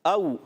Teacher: حمزہ خوب ظاہر کریں گے مگر واولین کو نرمی سے، او ٹھیک ہے، واولین نرمی سے۔